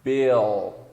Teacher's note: O som do L ele vem do fundo da garganta.